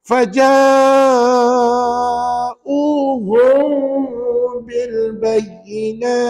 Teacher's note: dengung maka kiraan harakatnya adalah dua kat mana dengung Nampak tak m mati jumpa ba tu kena dengung tuan-tuan Walaupun dia bukan dengung yang sempurna dengung yang sempurna ni dia